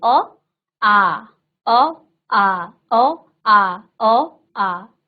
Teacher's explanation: तो अ खत्म, आ खींच रहा है थोड़ा सा। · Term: दीर्घ स्वर